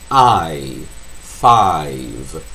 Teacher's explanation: Derrapam para longe. Começa no A e termina no I. I, five. These are off-glides.